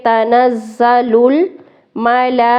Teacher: لام پہ کھڑا زبر اور مد زیادہ کھینچیں گے